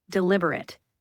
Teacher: That word is pronounced deliberate when it's an adjective with the stress on the second syllable.